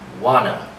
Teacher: But again, we drop the preposition to. We give it the sound. That's the schwa sound